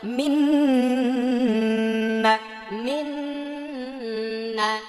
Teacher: নুন সাকিনের পরে নুন আসলে এটা ইদগামে বাগুন্না গুন্না করে পড়তে হবে